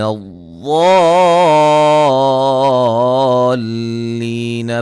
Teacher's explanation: ضاد کو موٹا ادا کریں گے، اور یہ مد لازم ہے، ٹھیک ہے، हरूफ मद्दा के बाद अगर तशदीद आ जाए तो वहाँ मद्द लाजिम होती है।